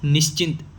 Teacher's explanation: अब यहाँ पे हम इसको इधर आधा स पढ़ेंगे ना तो निश्चिंत हो जाएगा ये बस इसमें निश्चिंत। स तो आ रहा है लेकिन स के साथ अ नहीं आ रहा है